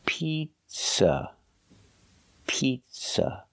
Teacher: the second syllable is not stressed it's pronounced with a relaxed a pizza pizza use a relax uh like cup and up it's